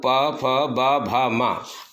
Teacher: अष्टौ माने होठ, ओष्ठयः इसको दिया गया संज्ञा, ओष्ठयः कहा जाता है। तो ये वर्ण जो हैं ये ओठ से निकलते हैं, इसलिए इनको ओष्ठया संज्ञा दी गई, ओष्ठया कहा गया।